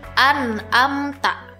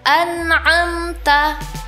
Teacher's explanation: Padahal huruf hamzah makhrajnya ada di pangkal tenggorokan, sedangkan huruf ain ada di tengah tenggorokan.